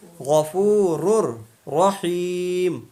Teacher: را کو را میں ملا دیں گے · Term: ادغام